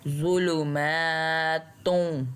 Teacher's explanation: میم کو ہم نے ایک الف جتنا لمبا کھینچنا ہے کیونکہ اس کے اوپر کھڑی زبر ہے